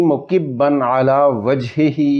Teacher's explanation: اس دی بعد عین حروف ہلکی وچ آئے کھا، اس واسطے اتھیں اظہار ہوسی